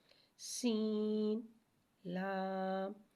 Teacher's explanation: سین کو ایک الف 3 مقدار کھینچ کے پڑھیں گے، سین میں سیٹی کو ظاہر کر کے پڑھیں گے۔ لام کو ایک الف 3 مقدار کھینچ کے پڑھیں گے، سین، لام۔